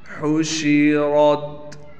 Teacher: یہاں بھی ہا کو بالکل صاف پڑھنا ہے، شین کی آواز کو بھی صاف کر کے نکالنا ہے۔ را کو موٹا پڑھنے کے ساتھ را کو تا سے ملائیں گے۔